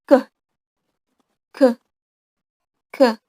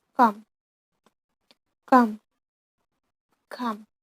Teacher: K sound is stop voiceless on velar dorsal place.